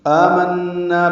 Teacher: آمنا پہ آ مد بدل ہے، نون مشدد پہ غنہ ہے، نا الف مدہ ہے۔ آ اور نا دو حرکات لمبے کریں گے، غنہ میں آواز 2 حرکات ناک کے بانسے میں ٹھہرائیں گے